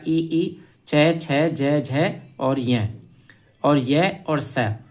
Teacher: तालव्य वर्ण में आपका ई, च, छ, ज, झ और य और स, ये आपके तालु उच्चारण स्थान है।